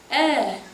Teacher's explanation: What is the first vowel that you will do? Is it a closed E or an open E? It is an open E.